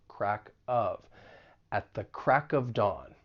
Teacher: we can link the final consonant sound in crack with the vowel sound in of